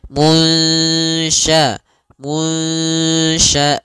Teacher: kita samarkan nunnya kepada huruf syin